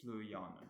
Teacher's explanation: The syllable ya contains a double vowel, it's got that double A, so it's stressed.